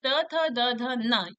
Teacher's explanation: त, थ, द, ध, न, इन सब का उच्चारण हम दंत से करते हैं। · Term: दंत व्यंजन